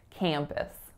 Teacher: That first syllable is cam, so it's that nasalized a vowel. And then the second syllable is p, schwa, s, pus, campus.